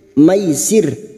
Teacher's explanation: kita melunakkan harakat fathah yang bertemu Ya Sukun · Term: Huruf layin